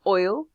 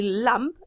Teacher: your tongue hits the front of your palate okay just in front of the alveolar ridge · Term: light l